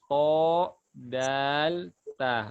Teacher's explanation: Ujung lidah ketemu belakang gigi seri atas.